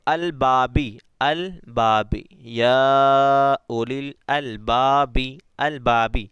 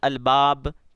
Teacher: با میں، ٹھیک ہے، ہاں، کب ہم کر وقف کی وجہ سے عارضی سکون آ رہا ہے، وقف کرنے سے، البابی ہم پڑھیں گے وقف نہیں کریں گے تو پھر مد نہیں آنے والا، لیکن جب وقف کر دیں گے الباب تو یہاں پر مد آ جائے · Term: مد عارض